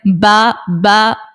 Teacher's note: जब हमारे दोनों होठ है ना उनका जो तर वाला हिस्सा जो गीला हिस्सा होता है वो अगर आपस में मिलते हैं तो वो बा निकल आता है